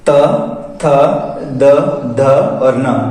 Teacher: आपका उच्चारण करते वक्त जीभ की स्थिति है वो दांतों पर है, दांत को स्पर्श कर रही है। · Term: दंतीय वर्ण